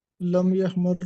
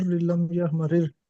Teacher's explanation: تیسرا جو لفظ ہے نا لم یحمرر، اس میں جو 2 راہ ہے وہ الگ الگ ذکر کیے ہیں، ادغام کو توڑ دیا